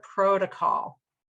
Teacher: the stressed syllable is the first syllable in this word